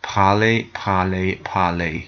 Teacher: You'll notice that the E and the R sound is an A sound.